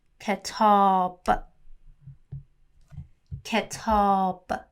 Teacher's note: So the only short vowel we have here is E, and the long vowel is A.